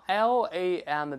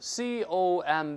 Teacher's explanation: 那最后那个▁b▁一般来说都是不发音的